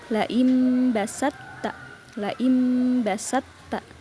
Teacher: Th dilebur diidgamkan masuk ke ta. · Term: idgham